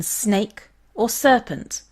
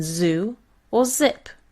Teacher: the same as their latin letters these are the alveolar fricatives s is the hissing sound in snake or serpent and z is the buzzing sound in zoo or zip these are the alveolar fricatives and they occur when you raise · these are the alveolar fricatives and they occur when you raise the tip of your tongue to the alveolar ridge just behind the upper teeth